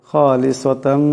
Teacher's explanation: ইনদাল্লাহ খালিসাতান, এখানে তার উপর দুই জবরে তুনবিন, এর উপরে মিম আসছে, এখানে ঈদগাম হয়ে যাবে, ঈদগামের একালে পরিমাণ গুন্না হবে।